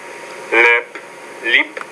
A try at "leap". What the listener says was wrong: Leap, lip. You're getting kind of mixed up. So again, the longer vowel sound, that's the one that you got to work on.